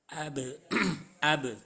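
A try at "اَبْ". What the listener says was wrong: Tipiskan lagi, jangan abe, tapi AB.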